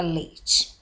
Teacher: Ao separarmos a palavra leite, as vogais E e I continuam juntas na mesma sílaba. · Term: ditongo